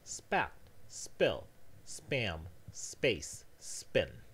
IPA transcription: spɑt spɪɫ spæm speɪs spɪn